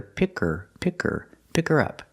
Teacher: You don't hear the H because the word her is not stressed.